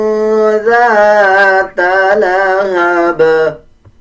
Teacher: جب ذال پڑھیں گے تو ذال کو پڑھتے ہوئے زبان کی نوک دونوں دانتوں کے درمیان لے کے آتے ہیں، تب ذال صحیح ادا ہوتا ہے